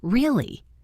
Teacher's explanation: For example, when you ask a question like, "Really?" your voice goes up slightly at the end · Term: rising tone